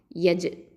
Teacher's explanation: அடுத்தது யா ஃபத்ஹா ஜீம் சுக்குன் யஜ். இது கல்கலத்து சுகரா, லைட்டாக அசைச்சு ஓதணும்